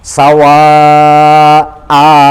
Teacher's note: Jadi pas. Sawa a agak panjang, panjangnya tepatnya adalah 2 ketukan, 2 harokat atau 2 detik atau 2 apa itu, 2 detik, 2 harokat, 2 ketukan atau 1 alif, itu panjangnya. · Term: fathah dan panjang